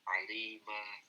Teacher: kalau misalkan kita berhenti di alima, maka tanwinnya kan menghilang